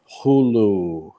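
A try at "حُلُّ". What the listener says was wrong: Yeah, pull your L. Hullu. must pull that L. Hullu. Hullu. Again, hullu. Because when you're saying it fast, yeah.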